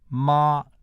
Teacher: Mandarin tone number 1, ma, is an extra high tone in the hexatave.